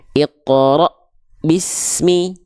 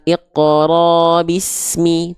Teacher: damah baik kasrah lalu dia berjumpa dengan huruf hamzah sukun maka suaranya seperti seolah tertahan terhentak terhenti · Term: syiddah